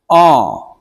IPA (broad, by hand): ɑ: